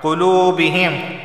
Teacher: واو سے پہلے پیش آیا ہے تو اسے 1 الف کے برابر کھینچ کر پڑھا جائے گا